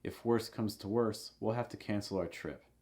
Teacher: heavy stress, notice on the last worst. Also, when you say worst, quick note on the pronunciation, make sure that your lips are going horizontal.